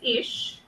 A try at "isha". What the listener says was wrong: Isha. You pronounce not as ish. Pronounce as isha.